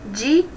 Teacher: Então, o I está numa sílaba, o A está em outra. Então, nós temos aí um hiato.